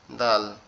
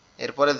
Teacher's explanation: দাল উচ্চারণ হবে দাঁতের গোড়ার থেকে উপরের